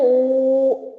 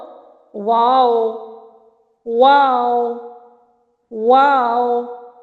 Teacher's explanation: दोनों होठों के गोल ना तमाम मिलने से वाव अदा हो रहे हैं।